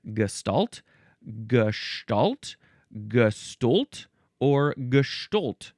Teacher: So in the middle, it's an S or a sh sound, and then it's stalt or stolt with an S or a sh.